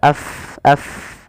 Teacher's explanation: fa pada lafal fa ini harus dialirkan nafas kita · Huruf fa itu makhra di bibir tapi tidak rapat bibir kita